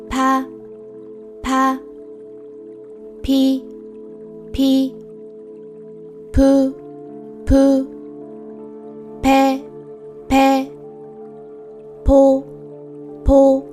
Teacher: Both sounds are produced when the closed lips open. However, since P is a voiceless sound, it leads to a lot of air passing through when the lips release open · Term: voiceless P sound